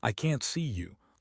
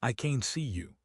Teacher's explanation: Negative can't, strong vowel, I can't go. If the vowel is long and loud, aah, it is negative. If the vowel is short and quiet, it is positive.